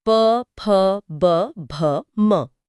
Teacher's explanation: बिना होंठों को मिलाए कोई प या म नहीं बोल सकता। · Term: ओष्ठ